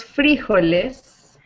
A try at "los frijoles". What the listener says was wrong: Exactly.